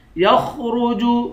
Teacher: خا اور را دونوں کو موٹا پڑھیں گے